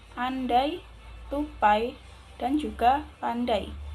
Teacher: Secara teknik diftong disebut juga sebagai fonem vokal rangkum karena terjadi perubahan kualitas bunyi atau luncuran dari satu vokal ke vokal lainnya. secara berkesinambungan. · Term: diftong ai